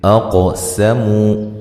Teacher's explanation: قاف کو موٹا ادا کرنا ہے، ہلا کے پڑھنا ہے، حروف قلقلہ میں سے ہے، مو و مدہ ہے۔